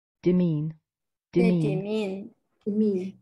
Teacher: And the stress is on the second syllable, mean.